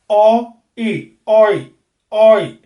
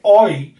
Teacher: ओ आप स्टार्ट नीचे से करेंगे लेकिन जीभ ई तक आते आते ऊपर चली जाएगी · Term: क्लोजिंग डिप्थोंग्स